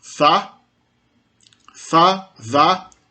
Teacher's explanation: Existe o som da interdental, tanto sonora quanto surda.